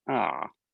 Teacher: so it starts mid and then goes down